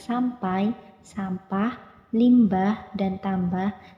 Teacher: pada premis 1 bunyi-bunyi bahasa mempunyai kecenderungan untuk dipengaruhi lingkungannya seperti struktur bunyi MP atau MB di dalam kata sampai sampah limbah dan tambah sama-sama berfitur bilabial